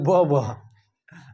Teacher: दांत और ओष्ठ, दांत और ओष्ठ दोनों मिला करके क्या बनता है? वो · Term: दंतोष्ठ